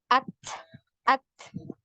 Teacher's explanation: Jadi untuk huruf ta ini ada aliran nafas atau yang biasa kita kenal dengan hamas ya. Jadi ketika di sukun ya untuk huruf ta ini ada decak ya, bunyi decaknya.